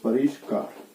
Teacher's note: यहाँ मूर्धन्य श का आगम होता है, तो परि धन कार आपका शब्द बनेगा, परि मूर्धन्य श का आगम हुआ ये, और परिष्कार।